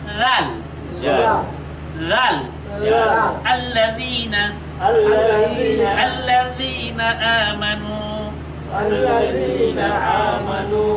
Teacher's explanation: দা রাল এটা রাল এটা অত্যন্ত নরম করে উচ্চারণ করতে হবে জিহ্বার আগা এবং সামনের দাঁতের আগা একত্রিত করে অত্যন্ত হালকা ভাবে নরম ভাবে নরম করে উচ্চারণ করতে হবে জাল জাল আল্লাজিনা আল্লাজিনা আল্লাজিনা আমানু আল্লাজিনা আমানু এভাবে নরম করে